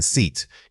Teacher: For the short vowel, like in sit, your jaw should be relaxed and the air flow is quick and clipped. When you say the long vowel, like in seat, you need to stretch that sound out, keeping your lips spread into a wide smile. The key difference isn't just length, it's tension.